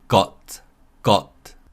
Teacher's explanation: glottal T sound when the sound of T stops in the throat, such as in the word got, got.